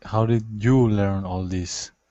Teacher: we need to emphasize you because it's kind of accusatory